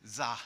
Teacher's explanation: he can't say th he can't say the so he pronounces it like a z